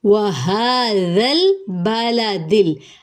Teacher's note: ذال کو نرمی سے پڑھیں گے، سیٹی کی آواز نہیں آئے گی۔